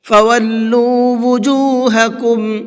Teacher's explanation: فولو کے لام کو کھینچ کر کے پڑھیں گے، اس لیے کہ یہاں پر یہ واو مدہ ہے اور واو مدہ کو کھینچ کر کے پڑھا جاتا ہے۔